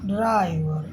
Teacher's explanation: इसमें जीभ मसूड़ों को छूती नहीं है, हवा बीच से निकलती है। साथ ही ड के ठीक बाद र होने के कारण ड्र ड्र ड्र का उच्चारण थोड़ा घर्षण के साथ ड्राइव ड्राइव के साथ होता है, जिसे अफ्रीकेट संघर्ष जैसे करते हैं, ड्रा ड्रा ड्राइव खा ड्राइव जैसा प्रभाव मिलता है इसके उच्चारण में। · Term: अल्वियोलर अप्रोक्सीमेंट